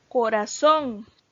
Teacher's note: tiene el acento en la última sílaba